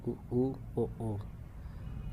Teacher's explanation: वृत्त के आकार में जो हमारे होंठ होते हैं खुलते हैं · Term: वृत्तमुखी स्वर